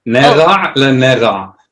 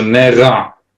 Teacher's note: With no dot, it's like kind of like the Parisian R.